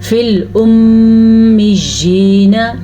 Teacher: आपने नोटिस किया मैं मीम पे मैंने गुन्ना किया है, इसीलिए किया है क्योंकि कुरान मजीद में जब भी मीम पेशाद आ जाए या नून पेशाद आ जाए, दोनों सूरतों में गुन्ना करते हैं, मीम और नून की शद।